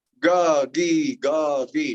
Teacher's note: You should feel your tongue going just slightly forward on the second one.